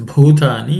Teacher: The next word is bhutani, in that bhu is aspirated.